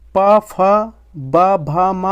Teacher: पा का जो उच्चारण स्थान है वो आपका ओष्ठ हो जाएगा